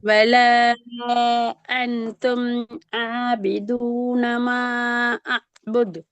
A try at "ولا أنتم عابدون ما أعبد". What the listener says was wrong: மாவை நீட்டணும். மாவையும் இந்த வலா நீட்டீங்களே அந்த மாதிரி நீட்டி தான் ஓதணும்.